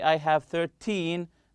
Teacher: when we are talking about quantity, time, or money, we stress the second syllable.